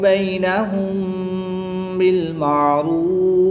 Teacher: میم ساکن کے بعد حرف با ہے تو یہاں پر اخفاء شفوی ہوگا، یعنی غنہ زمانی کر کے پڑھیں گے۔